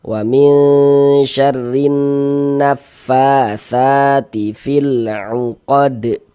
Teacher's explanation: Fa dibaca panjang tsa dibaca panjang itu madu thobi'i. Panjangnya dua harakat